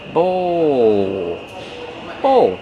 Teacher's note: Use the long O like no and go plus the dark L.